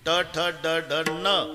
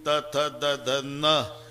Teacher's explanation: ट ठ ड ढ न, दाताशी संबंध नाही. त थ द ध न, दाताशिवाय उच्चार नाही.